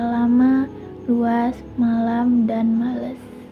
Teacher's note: konsonan lateral alveolar. Ini mencakup huruf L.